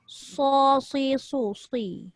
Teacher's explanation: Dia kena tebal. Dia kena ada bunyi sofir.